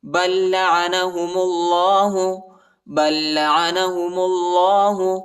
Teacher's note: پہلے والے لام پر جو ہے جزم آیا ہے، بَل لَّعَنَهُمُ اللَّهُ، میم کو لام کے ساتھ ملائیں گے اور اللہ کے نام کو موٹا پڑھیں گے